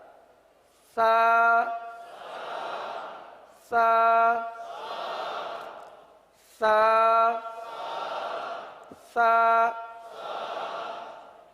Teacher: یہ زبان کا سرا اور اوپر کے دانتوں کے اندرونی کنارے سے یہ حرف ادا ہوتا ہے